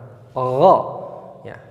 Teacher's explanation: Tempat keluarnya makhraj huruf ghain adalah dari tenggorokan atas. Ghain dengan kha dari tenggorokan atas.